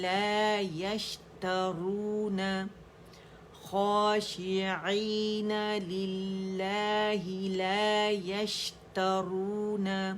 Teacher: یش اس کی تفشی شین کی ہم نے شاورنگ ساؤنڈ بھی واضح کرنی ہے، اس کا رخاوہ جو آواز چل رہی وہ بھی واضح کرنا ہے، ٹھیک ہے. ساکن کی خوبی واضح ہوتی ہے ساری.